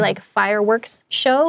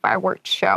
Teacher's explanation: that's one of those things where it's a little hard to say, so people often drop the s